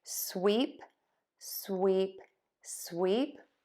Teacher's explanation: lips are pulled back tongue is high and flat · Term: the smiling e